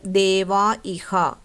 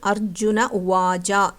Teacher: ചില സന്ദർഭങ്ങളിൽ വിസർഗം പൂർണ്ണമായും അപ്രത്യക്ഷമാകും. വിസർഗത്തിന് മുൻപ് ആ എന്ന സ്വരവും ശേഷം ഏതെങ്കിലും സ്വരമോ മൃദുവ്യഞ്ജനമോ വന്നാൽ വിസർഗം ലോപിക്കും. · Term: ലോപസന്ധി